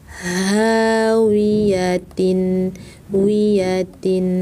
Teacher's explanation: Ha, besar, pangkal tenggorokan.